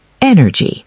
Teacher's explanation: 3 syllables. Stress on the first.